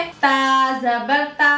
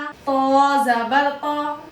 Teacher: ता में मुस्तफीला की सिफत है, ये बारीक पढ़ा जाएगा ता, लेकिन तो में मुस्तालिया की सिफत है, मोटा करके पढ़ेंगे, और इतबाक की सिफत भी है तो और मोटा करके पढ़ेंगे।